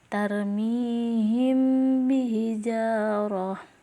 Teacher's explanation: dengan suara yang samar antara mim dan ba pada bibir kemudian ditahan kira-kira dua harkat atau ketukan Seraya mengeluarkan suara ikhfa dari pangkal hidung jadi ikhfa sapawi apabila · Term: Ikfa Syafawi